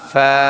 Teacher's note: সামনের উপরের দুই দাঁত নিচের ঠোঁটের পেটের সাথে লাগবে, তারপরে বাতাস বের হবে অনেক জোরে